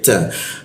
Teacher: ujung lidah bertemu gigi dia, ta, ada bocor halus dia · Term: huruf ta